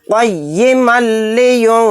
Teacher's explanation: तनवीन के बाद लाम आ गया तो यहाँ पर इदगाम बिला गुन्ना का कायदा होगा, यहाँ पर गुन्ना नहीं करेंगे, मीम को लाम में जल्द मिलाकर पढ़ेंगे